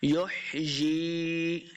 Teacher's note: یا مدہ ہے، اس کو دو حرکات لمبا کریں گے۔